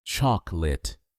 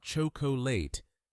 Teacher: Notice that the O in the middle almost disappears. It's not choco late.